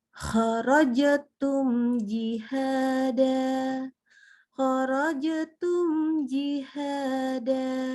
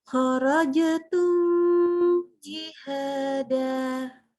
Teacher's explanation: Jadi idhar syafawi. Maka mimnya kita baca jelas, nggak pakai dengung yang ditambahkan.